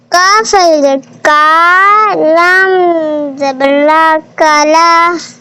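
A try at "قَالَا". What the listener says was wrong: کاف بڑا والا ہے، اس کی آواز بڑی نکالے، اولا۔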